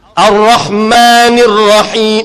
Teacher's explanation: Ar-Ra. Ra tebal pasal dia bagi fathah.